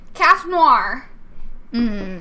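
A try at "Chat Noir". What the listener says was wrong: You do not pronounce the R, but okay.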